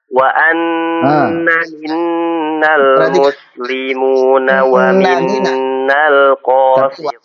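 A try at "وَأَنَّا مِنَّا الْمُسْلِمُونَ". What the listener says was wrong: Kurang panjang dulu. Untuk mat tabi'inya wa anna minnal muslimuna. Ulangi.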